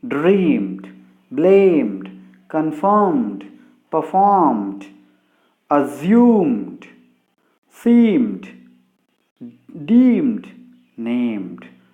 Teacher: So when voice sounds occur before ed, this ed is pronounced as da sound